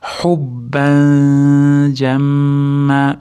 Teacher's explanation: mim g'unna tashdid bilan kelayotgani uchun ushlab turamiz, keyin cho'zib to'xtaymiz